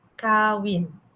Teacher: perkataan kawin disebut dengan nada yang sama, kawin. Dia tidak mempunyai nada yang tinggi atau rendah.